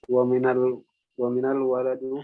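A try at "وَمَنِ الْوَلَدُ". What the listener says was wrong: Bukan minal itu ya, manil. Man ketemu al-walad. Cara menyambungnya di kasroh nunnya.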